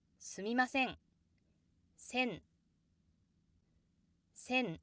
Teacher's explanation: There's a down step from the high pitch to the low pitch. This down step is caused by the accent placed on se. · the phrase すみません has the down step after せ. すみません sen せん There's a down step from the high pitch to the low pitch.